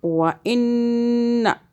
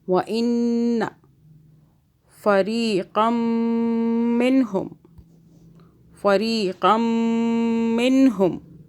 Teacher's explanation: نون مشدد پہ ہم غنہ کریں گے 2 سیکنڈ کا